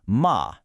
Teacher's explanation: first high flat tone, and you get ma, and that means mom.